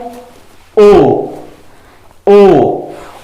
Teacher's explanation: ओंठ की स्थिति गोल होगी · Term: विवृत स्वर